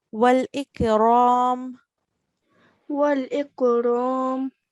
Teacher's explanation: this ra, it carries a fatha, so we pronounce it thick